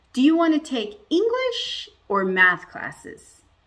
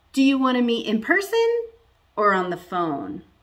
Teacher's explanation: we rise at the beginning and fall at the end